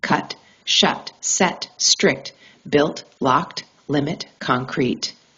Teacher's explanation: During T, air flow completely stops. The tongue seals against the roof front region. Pressure accumulates then releases abruptly. T is a closure event. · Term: the T sound